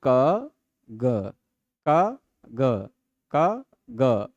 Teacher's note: ग बोलने में अलग गूंज होती है। गले में होती है। क खलेंगे तो वो नहीं होगा। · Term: घोष